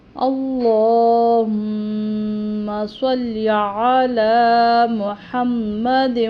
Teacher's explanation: لام کو موٹا پڑھیں گے، پر پڑھیں گے کیونکہ پیچھے زبر آ رہا ہے حمزہ پر